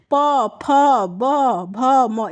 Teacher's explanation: इनका उच्चारण स्थान क्या है? ओठ है, ओठ से होता है।